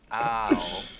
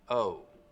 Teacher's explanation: raising the start of the diphthong in words like out and about, so that instead of it starting very open, ow, it's starting from somewhere in the middle of the mouth, oh. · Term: Canadian raising